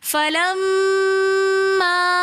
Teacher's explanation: फलम्मा के अंदर भी मुशद्दद होने की वजह से पहले हम गुन्ना करेंगे फलम, फिर आगे मद होने की वजह से हम इसको 3 अलिफ की मिकदार खींच कर पढ़ेंगे फलम्मा। पहले हमने मीम मुशद्दद के गुन्ने को कंप्लीट करना है, उसके बाद हमने मद की मिकदार को खींच कर पढ़ना है फलम्मा।